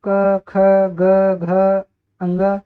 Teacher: इनका उच्चारण करते समय हमारी जो प्राण वायु है यह हमारे कंठ से स्पर्श होकर निकलती है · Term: क वर्ग, ग वर्ग के व्यंजन